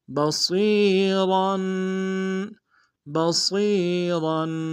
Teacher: را کے اوپر تنوین غنہ کریں گے